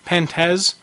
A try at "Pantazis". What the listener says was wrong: Isn't it Pantazis? Yeah, because it's C-I-S. Z-A-S. P-A-N-T-A-Z-I-S. Well, Pantaz, wouldn't that be without the I-S?